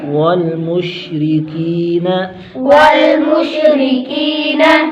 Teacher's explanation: را کو باریک کریں گے، را کے نیچے زیر ہے، کی پر یا مدہ، ایک الف کھینچے گے